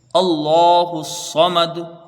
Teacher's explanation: وقف کریں گے دال ساکن ہوگی، وقف بالاسکان ہوگا، مد کوئی نہیں بنے گا، اور اس میں قلقلہ ہوگا